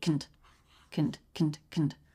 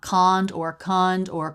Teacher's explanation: Second syllable very fast. K, schwa, N, D.